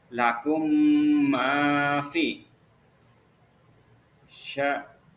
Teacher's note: mim rangkap ditasdidkan dengan dengung idgham mimi juga dengan dengung ya.